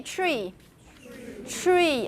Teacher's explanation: your tea is a little bit further back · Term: palatalized